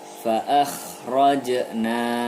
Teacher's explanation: ada huruf jim sukun, maka dibaca qalqalah sughra.